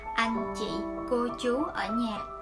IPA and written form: ɑ:ŋ ʧi: kəʊ ʧu: ə nhɑ: (Anhchịcô chú ở nhà)